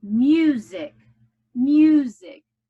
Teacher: The accent is on the first syllable. No accent on the second.